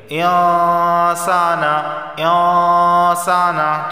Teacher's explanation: इन्नल इंसाना, अब ये वाला जो इंसाना वाला गुन्ना है ये इख्फा का गुन्ना है, क्योंकि नून साकिन के बाद सीन आया है और सीन हुरूफ़ इख्फा में से है तो इख्फा वाला गुन्ना होगा, यानी ज़बान की नोक ऊपर के तालु से नहीं लगेगी और एक अलिफ के बक़दर यहाँ गुन्ना करेंगे